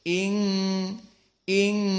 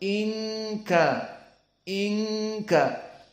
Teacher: atraf lisan n Ninu an jika Zahir berarti in kadarot in Namun karena bertemu dengan Kaf jadi ikhfa maka disembunyikan makhraj Nun menjadi makhraj kisum di hidung jadi in ing di sini lalu berapa harakat Hanya dua harakat